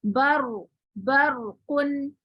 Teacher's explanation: अब 5वें में मैंने आपको क्या पढ़ाया, रॉस पर रॉ साकिन मा कबल जबर, यानी रॉ साकिन है, ये रॉ साकिन और इससे पहले जबर है, तो अब इस रॉ साकिन को किस हालत में पढ़ेंगे आप, मोटा पढ़ेंगे।